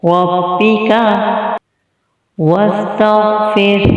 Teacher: غین کو موٹا پڑھیں گے اور وقف کی صورت میں ہا ساکنہ ہو جائے گا اور ہا کی آواز آخر میں آئے گی۔